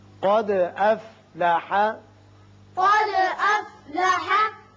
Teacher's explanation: دال ساکن ہے، اس کی صفت قلقلہ ادا کریں گے اور قاف کو پر پڑھیں گے